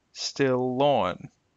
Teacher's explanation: notice the L will stretch a little bit between the two